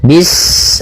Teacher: Pada bacaan bis, ini sempurnakan huruf sin-nya. Ketika sin-nya sukun, ini ada sifat shafir. Dia harus kita alirkan nafasnya.